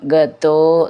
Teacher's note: ഈ ഗത എന്നുള്ളത് ത എന്നാണ് അതിൻറെ ഉച്ചാരണം ഗതോ എന്നാണ് ദ എന്നാവരുത്